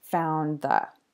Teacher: it can be difficult for a mouth to make the nd-th sound when somebody is speaking quickly. So often English speakers just drop the D and don't pronounce it. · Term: elision of the D sound